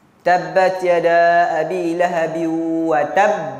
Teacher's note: Huruf qalqalah kalau duduk belakang sekali dia besar. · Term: qalqalah besar